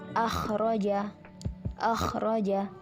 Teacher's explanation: Cara membacanya, ketika melafalkan huruf hijaiyah yang disifati isti'la harus disertai dengan mengangkat pangkal lidah ke langit-langit mulut, sehingga bunyi huruf menjadi lebih tinggi, tebal, dan berat.